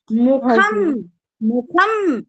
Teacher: ये म को झट से हम लोग बंद कर देते हैं। उच्चारण म का उच्चारण झट से बंद हो रहा है। मुखम अम ऐसे उच्चारण हो रहा है। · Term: हलंत म